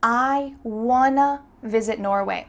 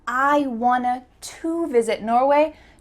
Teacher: The word to changed to a. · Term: reduction